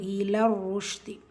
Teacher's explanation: ரால ஷத்தா இருக்குது, அழுத்தம் கொடுக்கணும்.